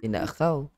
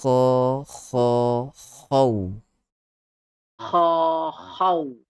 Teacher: Kekalkan sifat isti'la pada huruf kha.